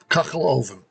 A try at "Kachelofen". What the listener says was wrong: No, kachel. It's very guttural. Kachel. Ofen.